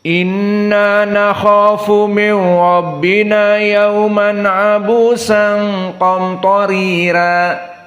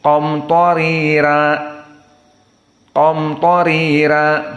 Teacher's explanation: dibaca qamtarira karena di sini dia tarqiq ra